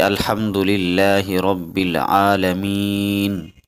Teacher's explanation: عالمین پر ہم نے وقف کیا تو عالمین کے نون کو ہم نے ساکن کر دیا، اصل میں تھا الحمدللہ رب العالمین، تو ہم نے عالمین پر وقف کیا اور نون کو ساکن کر دیا۔